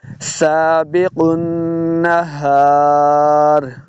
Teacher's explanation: نون مشدد ہے، غنہ کر کے پڑھنا ہے